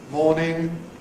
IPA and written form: ˈmɔːnɪŋ (‘morning’)